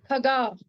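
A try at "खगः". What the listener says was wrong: No, I can't hear the Visarga sound. No, Visarga sound you said is her, right? I'm not hearing it. Khagaha. No, khagaha.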